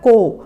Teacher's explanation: ओ की मात्रा का उच्चारण थोड़ा जल्दी किया जाता है, जैसे क में ओ की मात्रा को।